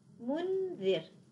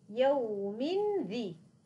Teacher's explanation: سأنتقل من الميم إلى الذال. الذال طرف اللسان مع أطراف الثنايا العليا، لن ألمس أطراف الثنايا العليا، لكن سيكون هناك فراغ قليل بينها وبين طرف اللسان. منذ، عندما انتهيت أنا من زمن الغنة الكاملة قلت ذي، قرعت المخرج، لكن قبله أنا أقف فقط واقفة عند المخرج، لم أقرعه أبدا.